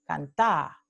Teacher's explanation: en lugar de tener la aproximante the, cantada, tenemos elisión